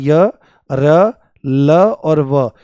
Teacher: सघोष मतलब इनके बोलने में कंपन होता है स्वरों की तरह से ही और ये सभी के सभी आपके अल्पप्राण हैं। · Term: अंतस्थ व्यंजन